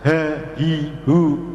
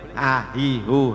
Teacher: Jadi kalau kita membaca huruf H harus dari pangkal tenggorokan.